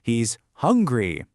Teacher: Of course, the stress is on hungry. It's a positive sentence, so we stress the key piece of information, not that weak little verb.